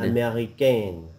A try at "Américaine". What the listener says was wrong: A little bit more open in the back of your mouth. Américaine.